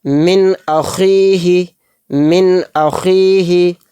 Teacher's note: حروف حلقی کے 6 حروف میں سے ایک حرف ہے، تو اس میں بھی اظہار کا قاعدہ ہوگا، اس کو بلا غنہ کے جلد پڑھیں گے، نون کو ظاہر کر کے پڑھیں گے